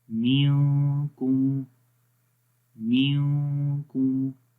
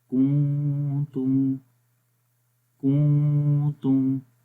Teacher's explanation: آواز ناک میں گونج رہی ہے، یہ اخفا ہے، آواز نون کی ہم چھپا کر پڑھ رہے ہیں ناک کے اندر